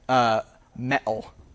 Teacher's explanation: Many dialects of English do this, although the British do kind of have their own variety of it, where they also, instead of flapping these T's, they glottalize them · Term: T glottalization